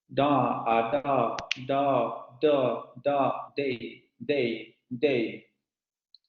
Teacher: Vibración de cuerdas vocales, el aire sale por la cavidad oral y es el mismo punto de articulación y modo de articulación que el anterior.